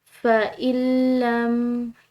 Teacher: درمیان میں آنے والی نون ساکن جو ہے اس کی آواز ختم ہو جائے گی۔ اس کو ہم پڑھیں گے فَإِن لَّم، یعنی کہ اس کو اگر ہم پڑھیں فَإِن لَّم نون ساکن کو ادا کریں تو یہ درست نہیں ہوگا، اس کو ہم نے ملانا ہے لام کے ساتھ۔